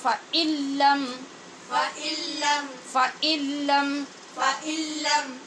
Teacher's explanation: نون کا لام میں ادغام کیا